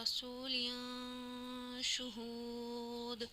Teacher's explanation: دو زیر کی تنوین ہے اور اس کے بعد اکفا کے 15 حرفوں میں سے شین آ گیا تو یہاں پہ اکفا کر کے پڑھیں گے